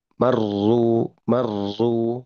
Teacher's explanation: ro yang bertasdid itu memang bergetar juga seperti halnya ro yang tidak bertasdid, tetapi memang kondisinya lidah itu cenderung tegang, gitu ya. Sehingga pergetarannya pun itu tidak terlalu seperti marru, marru tidak terlalu.